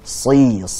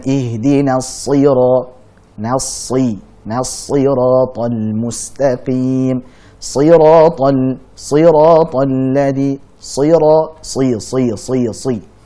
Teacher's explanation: Padahal kasrah itu kan harokat yang lemah. Bahkan saat kasrah sekalipun, shad tetap dibaca dengan sangat tebal.